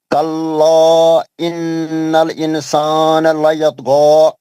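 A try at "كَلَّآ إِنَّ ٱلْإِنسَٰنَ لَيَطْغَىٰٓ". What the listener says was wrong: صحیح پڑھیں, غلطی کری آپ نے, اخفاء چھوڑ رہے ہیں آپ. قاعدے بولیے آپ نون ساکن اور تنوین کے.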